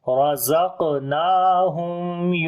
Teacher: میم کے اوپر اظہار شفوی کریں گے کیونکہ میم ساکن کے بعد یا آ گیا اس وجہ سے. اور میم کے اوپر صفت توسط بھی کریں گے ہلکی سی آواز کنٹینیو ہوگی. · وَمِمَّا رَزَقْنَاهُمْ را کو موٹا پڑھیں گے زبر ہے اس کے اوپر قاف کے اوپر قلقلہ کریں گے. کمزور قلقلہ ہوگا درمیان میں قلقلے والا حرف آ گیا ہے اس وجہ سے.